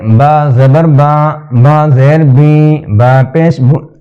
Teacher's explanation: مجہول کہتے ہیں یعنی ڈھیلا ڈھیلا پڑھنا, ناک میں پڑھنا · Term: مجہول پڑھنا